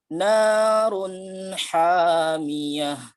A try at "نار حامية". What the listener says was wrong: بدون زيادة في المد. نار، لا، مباشرة. نار حامية.